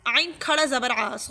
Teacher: اب دیکھیے اس کھڑے مد کو سمجھیے، جو کھڑا مد ہے عین کھڑا زبر آ، جو کھڑا زبر ہے اس کو ہم 1 سے 2 الف کی برابر کھینچ کر پڑھیں گے